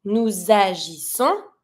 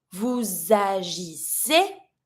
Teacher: But because the verb here starts with a vowel, I'm always going to try to link my pronoun with my verb. So I'm going to be pronouncing the S from nous to link it to the A with agissons.